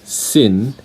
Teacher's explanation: your tongue should be touching the alveolar Ridge when you pronounce the last sound of the word sin · the last sound of the word sing is a velar sound